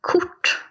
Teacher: we're not rolling that R there. - Exactly. It becomes more of a t sound.